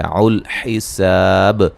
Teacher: سین کو باریک سیٹی سے ادا کریں گے، الف مدہ ہے، وقفاً بڑی مد کے ساتھ پڑھ سکتے ہیں، اور با پہ قلقلہ کو واضح کریں گے۔